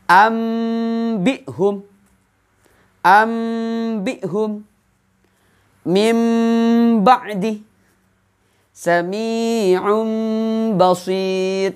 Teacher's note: membaca nun mati atau tanwin seperti mim mati. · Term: iklab